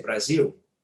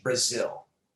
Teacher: in english we will never make our lips round for the l · for english brazil my lips do nothing the ill sound comes from the back of my mouth uh it's called a dark l it's a very useful thing